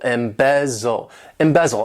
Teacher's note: Embezzle, to embezzle. This verb has 3 syllables and the stress is on that second syllable, embezzle, embezzle.